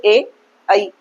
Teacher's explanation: ए और ई ये दोनों क्या है कंठ और तालू से उच्चारित किए जाते हैं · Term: कंठ तालू